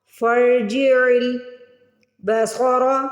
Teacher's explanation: صاد کی آواز نکالیں گے، سین کی نہیں. صاد کو موٹا پڑھیں گے